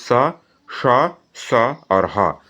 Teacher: सबसे अधिक गर्म हवा इन्हीं वर्णों को बोलते हुए मुंह से निकल रहा है। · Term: ऊष्म व्यंजन